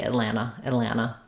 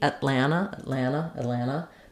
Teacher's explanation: This is an unreleased T